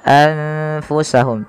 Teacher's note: Maka menjadi anfusahum. Tidak lagi dengan jelas suara nunnya anfusahum, tapi samarkan ke huruf fa. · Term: ikhfa